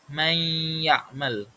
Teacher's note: cara membacanya dimasukkan ke huruf ya sambil didengungkan